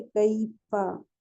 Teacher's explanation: کیفا یائے لین ہے، متحرک ورڈ کو جلدی پڑھتے ہیں، پتہ ہے یائے لین کو نرمی کے ساتھ تھوڑا سا کھینچ کے پڑھتے ہیں